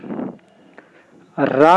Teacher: रा का उच्चारण करते समय जीभ मुड़ जाती है, और कंपन अधिक कंपन होता है, इसलिए इसे प्रकंपित या लुंठित व्यंजन कहते हैं।